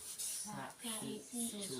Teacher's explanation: jadi si ujung lidah itu hampir kena sama gigi bawah, ujung gigi bawah. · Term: huruf sin